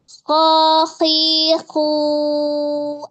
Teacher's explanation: Kha dia merupakan huruf yang hams dan rokhawah ya. Jadi ada aliran nafas dan suara.